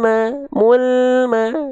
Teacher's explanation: lam itu gak boleh terputus suaranya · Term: lam sukun